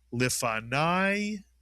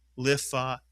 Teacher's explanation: Nav and the word as a whole becomes lifanov. So at the end of a word, kamats yud is I as in the word lifanai. But if the kamats yud comes inside a word, it remains an ah sound